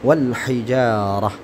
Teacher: Maka tnya ketika tnya berbentuk seperti ini, maka t-nya berubah menjadi ha ketika dia disukunkan